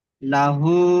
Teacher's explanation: লাহু, লামের উপর জাবার এসে, জাবার হলো হারাকাত, হারাকাতের পর তাড়াতাড়ি পড়তে হয়। হুম, হার উপর এসে উল্টো পেশ, ওয়াও মাত্রা সমাতুল্য, এটাকে একালি পরিমাণ টান দিয়ে পড়তে হয়।